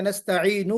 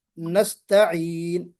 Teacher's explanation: नून मुतहर्रिक है, इसको हमने साकिन किया, क्यों, वक्फ करने के लिए, आरजी तौर पर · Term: सुकून आरजी